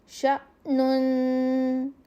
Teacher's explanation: کیونکہ الف کے اوپر جب جزم آ جاتی ہے تو الف نہیں رہتا, وہ حمزہ میں بدل جاتا ہے, اور حمزہ کی آواز کو نکالنے کے لیے ہم تھوڑی سی اس کو ج کی ساؤنڈ دیتے ہیں, تھوڑے سے جھٹکے سے پڑھتے ہیں